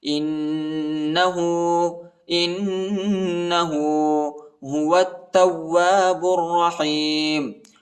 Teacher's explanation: واو کو تا کے ساتھ ملائیں گے، الف اور لام نہیں پڑھا جاتا، تا کو واو کے ساتھ ملانا ہے، واو کے بعد الف آیا ہے، اس کو تقریباً 1 الف کی مقدار تک کھینچنا ہے.